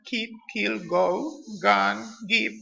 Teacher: produced with the back of the tongue and against the velum are called velars